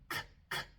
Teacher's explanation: Y un sonido sordo es un sonido que se pronuncia sin vibración de las cuerdas vocales, como la C, K, K, K. Ven, cuando pronuncio la C, mis cuerdas vocales no vibran, es puro aire